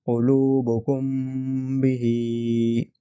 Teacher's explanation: اخفاء شفوی میں جو ہے ہم ہمارے ہونٹوں کو ٹائٹلی پریس نہیں کریں گے، ٹھیک ہے، لیکن ہمارے ہونٹ آپس میں ملیں گے، 2 ہونٹ ہمارے آپس میں ملیں گے، لیکن ہم جو ہے ٹائٹلی پریس نہیں کریں گے ایک دوسرے کو۔